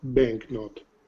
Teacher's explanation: The K is very short. But it's not silent.